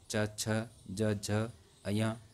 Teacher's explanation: च वर्ग च छ ज झ य का उच्चारण स्थान तालु से